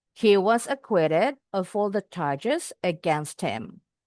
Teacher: Haknya boleh dibuang supaya bisa disambung bunyinya. Jadi nyambung huruf T-nya ke bunyi M.